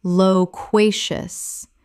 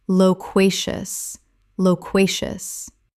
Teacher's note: Three syllables with the stress on the second, meaning very talkative.